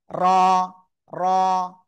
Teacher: তো এই যে র অক্ষরটা, জিহ্বার আগার পিঠ উপরে তালুর সাথে এরকম একবার খেয়ে র অক্ষরটা উচ্চারণ হবে। ঠিক আছে, জিহ্বার আগা তারপর উপরে তালুর সাথে লাগিয়ে মোটা আওয়াজে উচ্চারণ করব।